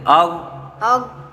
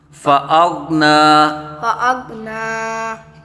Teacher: عائلا فأغنى آگو نہیں کریں گے بیٹا، غین پہ آواز کو ہلائیں گے نہیں، قلقلہ نہیں یہاں ہوگا، آگ أغ نہیں، آگو نہیں کریں گے، آگ نا نام فأغنى۔